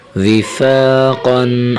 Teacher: واضر وی، فا الف زبر فا، وفا، قوف دو زبر قن، وفاقن۔ حرف قاف کو موٹا کر کے پڑھیں گے، ٹھیک ہے نا، حرف قاف ہمیشہ موٹا پڑھا جائے گا۔